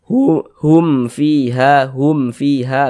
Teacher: Tapi kalau ada mim sukun tidak bertemu dengan huruf ba, mim sukun tidak bertemu dengan huruf mim, maka semua hukumnya namanya izhar syafawi. Karena dia izhar, maka dibaca jelas, tak berdengung, baca pendek saja.